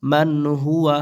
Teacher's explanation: সাকিনের পরে হা ইজহার স্পষ্ট করতে হবে